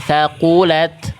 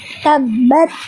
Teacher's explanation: Sedangkan huruf ta dia hanya keluar hams percikan nafas.